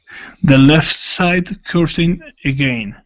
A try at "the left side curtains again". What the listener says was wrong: Okay, now with curtains, that's when you need to add the S. Okay, so it's The left side curtains again.